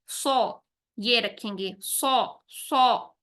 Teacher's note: सौद उन सात हुरूफ में शामिल है जिसे हम मुंह भर के और मोटा अदा करेंगे